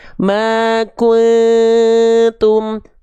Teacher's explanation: N-nya sudah dimasukkan samar dengungkan ke huruf ta. Sambil bersiap-siap melafalkan huruf ta-nya. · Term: ikhfa